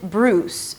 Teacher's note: A tense /uw/ and an /s/.